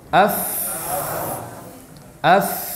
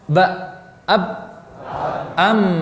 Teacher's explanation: Jadi ini hakikat dari hamas dan jahar adalah dilihat dari pita suara. Pita suara terbuka, maka udara banyak mengalir. Ini mengakibatkan suara menjadi lemah